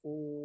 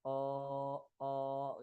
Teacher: Ketika dhammah, ya, maka ketika dipanjangkan jadinya bunyinya u, bukan o gitu.